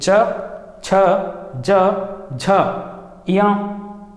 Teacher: बोलते समय च, मेरा जीभ कहाँ पे टच हुआ है? तालु पे टच हुआ है। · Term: तालव्य